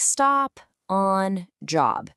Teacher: It's that quick, open, ah sound. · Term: short O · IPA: /ɒ/